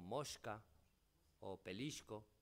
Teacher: palatalización de S en contacto con la velar sorda, con K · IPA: /sk/